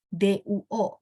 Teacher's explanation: Duo bacanya tidak pakai angin